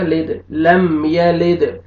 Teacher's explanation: دال قلقلہ کریں گے ڈبل ساؤنڈ آئے گا